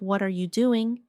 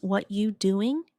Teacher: instead of what are you doing, it becomes what you doing? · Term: reductions